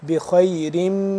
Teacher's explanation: میم مشدد کی وجہ سے یہاں پہ ہم کیا کریں گے غنہ کریں گے، یعنی کہ آواز کو تھوڑی دیر کے لیے لمبا کر کے پڑھیں گے. بخیرم کریں گے، یہ ہوگا غنہ.